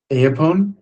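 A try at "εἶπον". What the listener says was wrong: Apone. The two vowels don't become one sound, they're distinct.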